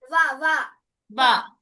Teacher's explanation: దంతాలు తగులుతుంది నాలుక, ఓష్టాలు పెదాలు కలుస్తున్నాయి. దంతోష్టవ్య.